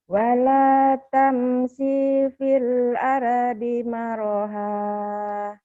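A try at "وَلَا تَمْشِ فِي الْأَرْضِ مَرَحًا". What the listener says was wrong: Sinya pan pendek. Wala tamshi, tapi shinnya shin gede. Wala tamshi fil ardi maraha.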